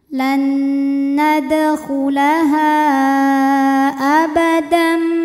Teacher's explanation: Di mana mad tabi'inya adalah alif sebelumnya fathah pada kata nadkhulaha, sedangkan hamzahnya a pada kata abadam. Maka ha panjang boleh 4 boleh 5 harokat. · Maka bunyi tanwinnya dimasukkan ke mim. Abadam bunyi m dan tahan bunyi m-nya, dengungkan. Abadam ma hukumnya mad tabi'i zahiri karena ada alif didahului baris fathah. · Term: idgham bi gunnah